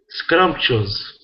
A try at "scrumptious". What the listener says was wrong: Scrumptious. Remember to say the R here. Scrumptious.